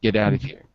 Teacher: It's obvious that we dropped the T. The T becomes a D, and we move it to the next letter, to the next word.